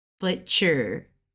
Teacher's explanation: It's like straight across because it's first tone.